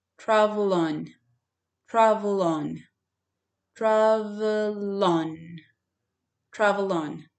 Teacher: you take the letter L and connect it to the second word on